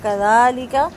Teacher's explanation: دال نرمی کے ساتھ زبان کی نوک دانتوں سے باہر نکال کے پڑھا جائے گا